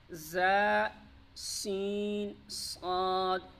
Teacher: جب زبان کی نوک نیچے والے دانتوں پر لگے، جب اوپر اور نیچے کے دانت آپس میں ملتے ہیں پھر جا کے زبان کی نوک نیچے والے دانتوں کے سرے یا کنارے پر لگتی ہے تو 3 حروف ادا ہوتے ہیں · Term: حروف صفیریہ